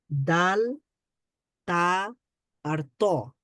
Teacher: তা উচ্চারণ তার করার সময় একই জায়গা থেকে, মানে জিহ্বার, জিহ্বার আগা সামনের উপরের দুই দাঁতের মাড়ির সাথে লাগবে।